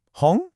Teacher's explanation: It's a rising tone. A really good way to think about it is to pretend you're asking a question, like, Hong? Your pitch should just naturally go up. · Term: second tone